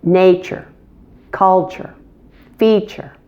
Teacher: We stress the first syllable.